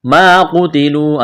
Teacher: ایک الف کے برابر کھینچنا ہے، ما قتلوا الف مدہ ہے، قاف کو موٹا کرنا ہے، تا کو باریک کرنا ہے ، واو مدہ ہے، ایک الف کے برابر کھینچنا ہے، قل